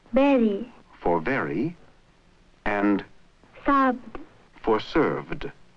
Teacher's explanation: the speaker uses the nearest sound in her own language, the B for V.